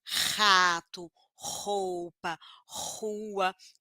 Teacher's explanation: o som do R forte também é velar por quê Porque minha língua vai lá atrás na garganta Raspa a garganta · Olha, a língua vai lá atrás e raspa a garganta. Faz força no pescoço.